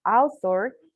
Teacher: it's voiceless, and it's a fricative, and it's also dental